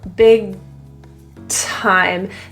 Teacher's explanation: the G is generally not released, so it kind of just stays in the throat. Big time. The air is then released at the T.